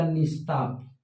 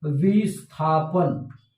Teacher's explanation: विसर्ग के बाद थ आया तो विसर्ग दंती स हलंत में बदल जाएगा